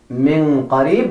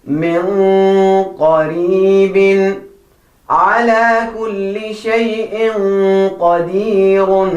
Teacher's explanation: So your ikhfa has to be a little bit thicker.